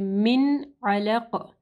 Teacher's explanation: نون ساکن، اس کے بعد عین ہے، حروف حلقی میں سے یہاں پہ اظہار کا رول آ رہا ہے، یعنی ہم لوگ نون کو کلیئر پڑھیں گے